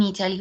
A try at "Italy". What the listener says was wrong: Okay, the pronunciation for Italia is Italy, okay? Italy. La T como si fuera una L. Italy, okay?